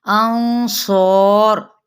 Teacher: लेकिन यहाँ पे स्वाद पुर होगा, अलिफ भी पुर पड़ा जाएगा